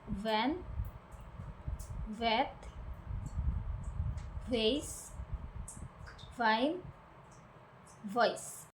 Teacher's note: your bottom lips touches the top teeth and air passes through, creating friction while using your vocal cords.